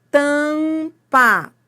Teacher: esse M forma um som? Não. Ele nasaliza o A. Então, ele não é um som, ele não é um fonema. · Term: dígrafo vocálico